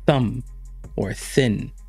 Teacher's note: this is not voiced what that means is that all of the air comes through your lips with no vibration in your throat